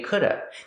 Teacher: People will not pronounce the v sound at the end, could've. They just say coulda. This happens only before a consonant.